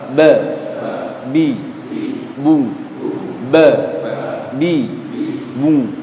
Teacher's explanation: Kita bahas satu persatu. B ya, bertemunya antara kedua bibir dalam keadaan tertutup yaitu huruf ba. Jadi kedua bibir ditemukan seperti itu.